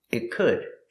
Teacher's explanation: The T in it is a stop T. Stop the air.